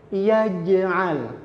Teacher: Mboten yaj'al, karena jim itu tadi di tengah lidah bukan di ujung lidah, maka tidak berdesis.